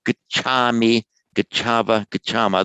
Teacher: There's this Vedic tendency to lengthen the a before a labial, before a m or a v.